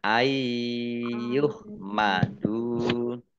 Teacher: nun sukun bertemu dengan huruf ya bacaan idgham bi gunnah masuk dengan mendengung yaitu mendengung ya. Kalau mendengung itu berarti ditahan ya.